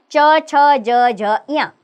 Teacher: इनका उच्चारण स्थान है तालू यानी कि तालू का प्रयोग होता है इनको बोलते समय ये व्यंजन है च छ ज झ य और तालव्य इनका